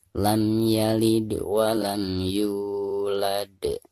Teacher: maka suara dalnya itu harus dipantulkan dengan suara pantulan yang lebih besar. Karena huruf qalqalah dal di sini itu posisinya ada di ujung ayat.